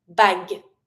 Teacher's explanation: And really do emphasize the G sound, but don't pronounce the final E.